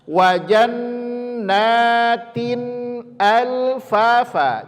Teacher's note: Jannatin, tanwin bertemu hamzah, maka izhar cara membacanya, tidak boleh didengungkan.